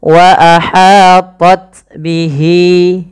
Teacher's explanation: panjangkan lafal hi dua harakat karena ia mad silah qasirah ditandai dengan ha damir. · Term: mad silah qasrah